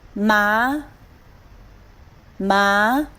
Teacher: The second tone. Ma, go up.